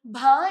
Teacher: ഭ എന്ന് പറയുമ്പോൾ നമ്മുടെ രണ്ട് ചുണ്ടുകളെ കൂട്ടിമുട്ടുന്നുണ്ട് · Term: ഓഷ്ട്യമാണ്